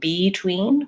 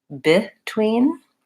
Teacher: we don't say beetween we actually say between and that's because this vowel becomes an unstressed vowel because it's an unstressed syllable